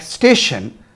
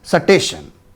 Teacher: for most Punjabi speakers a word like station is naturalized as satation